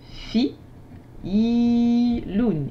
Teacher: ici la lettre ya sert de prolongation son i